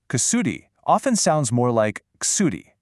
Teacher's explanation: That oo sound just gets squeezed out.